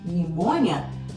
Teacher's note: Por exemplo, a pneumonia, a gente fala no latim, a gente pronuncia todos os fonemas, todos os sons. No inglês não, você tem o pi lá, pneumonia, mas você não pronuncia esse pi.